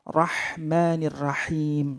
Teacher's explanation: huruf H sedikit ditekan di tengah-tengah tenggorokan